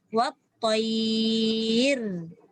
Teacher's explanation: Jadi pada kalimah wat-tayri bila waqaf tak boleh dibaca wat-tayri lagi. Dia kena baca dengan wat-tayr. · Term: ra sakinah